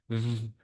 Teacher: Their other is the labiodental, where we use the lips and the teeth to produce this type of sound, like v, like we use the teeth between our both lips.